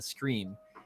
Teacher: when he said screen I'm hearing him say scream which is interesting because that seems like a forward shift